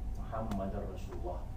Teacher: idgham memasukkan huruf dal pada huruf ra